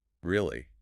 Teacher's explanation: if you're just bored your voice would probably stay flat